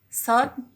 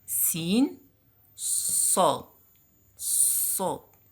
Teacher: It's similar to Sin, but there is a difference between Sad and Sin. In Sad, we raise the deepest part of tongue. But in Sin, the face has the shape of smile.